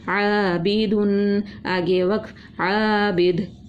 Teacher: ایک الف کے برابر کھینچ کے پڑھا، الف مدہ ہے عین کا · پیش کی تنوین ہے اس لیے اس کو غنہ کر کے پڑھا